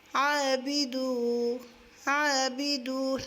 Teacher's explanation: lips گول ہوں گے اور وہ مدہ ہوگی، ایک الف کی مقدار پر کھینچیں گے